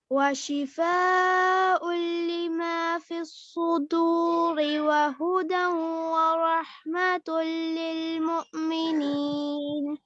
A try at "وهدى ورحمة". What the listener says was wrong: بارک اللہ فیک، وہدا، یہاں پہ بھی غنہ ہے نا، یہاں پہ بھی غنہ کیجئے، وہدا ورحمۃ،